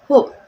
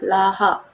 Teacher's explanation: Geseran glotis H ditemui di awal kata dan di tengah kata.